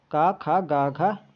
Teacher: जो आपका का वर्ग है यह कंठ से उच्चारित होता है